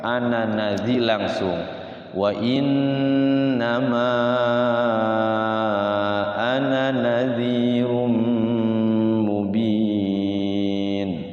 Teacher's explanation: Kalau wasal kita tidak boleh panjang. Jadi bacanya satu ketukan.